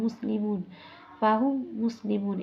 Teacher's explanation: মিম হরফটি পরবর্তী মিমের সাথে ঈদগাম হয়েছে